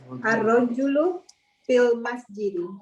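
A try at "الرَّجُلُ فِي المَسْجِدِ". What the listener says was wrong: Ahsanti, ar-rajulu fil masjid.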